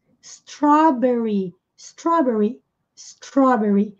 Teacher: Esse R enrolado do inglês